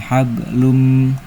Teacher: langsung masuk ke mim jadi hablum dan didengungkan, ditahan. Hablum ditahan dengungannya. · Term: idgham bigunah